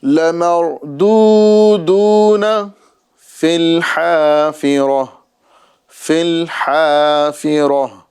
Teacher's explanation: گول والی تا، یہاں پر ہمیں اسے ہا ساکنہ سے بدل دینا ہے